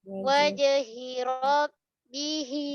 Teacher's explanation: Jangan wajhi. Waw nipis, jim qalqalah pula sughra juga tengah kalimah.